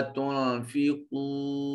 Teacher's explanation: نون ساکن کے بعد تا حرف اخفا ہے، نون کو اپنے مخرج میں چھپائیں گے۔